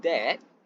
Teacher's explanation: the tongue is centralized and comparatively low. The lips lack a circular shape. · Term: short vowel